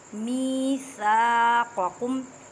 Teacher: میثاقکم یا ساکن سے پہلے زیر ہے، یا مدہ کا قاعدہ کریں، مینس کہ ایک الف کی مقدار میں کھینچ کر پڑھیں، الف مدہ کا قاعدہ کریں۔ قاف کی یہ اس قاف کو حروف مستعلیہ میں سے ہے، موٹا پڑھیں